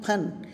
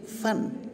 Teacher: बिना बिंदी का फ होता है उसमें दोनों होंठ जुड़ जाते हैं